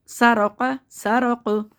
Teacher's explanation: سرا را کو موٹا پڑھنا ہے قو سرق وقف کی صورت میں قاف ساکن ہو جائے گا زبر حذف ہو جائے گا قاف ساکن ہو جائے گا. قاف ساکن آواز جو پلٹ کے واپس آئے گی مخرج قلقلہ کے ساتھ